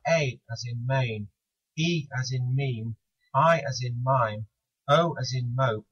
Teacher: four of the five so called long vowels are in fact diphthongs